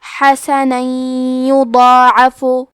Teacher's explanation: کلمت یضاعف میں حرف الضاد کو موٹی آواز میں پڑھیں گے کیونکہ اس پہ کھڑا زبر ہے تو یہاں مد الف ہے، لہذا ہمیں مد الف کو بھی تفخیم سے ادا کرنا ہے. · ادغام کا معنی ہے حرف کو حرف میں داخل کرنا، تو ہم تنوین کو یا میں ملا کے غنہ اور تشدید کے ساتھ یہ حکم کو ادا کریں گے